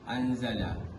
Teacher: Huruf nun sakinah bertemu dengan huruf zai, lalu dibaca secara sama dan didengungkan selama 2 harakat. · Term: ifa hakiki